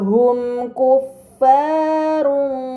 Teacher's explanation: terdapat mim sukun bertemu dengan huruf kaf, ini dinamakan izhar syafawi, maka mim sukun dibaca secara jelas